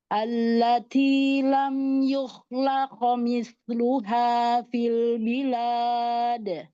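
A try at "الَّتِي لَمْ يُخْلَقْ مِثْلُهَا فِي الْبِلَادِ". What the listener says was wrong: Naikkan lagi pangkal lidahnya. bilwad. Coba maksudnya nggak terlalu bilwad, bilwad. Coba arah suaranya,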